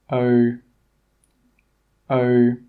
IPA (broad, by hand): əʊ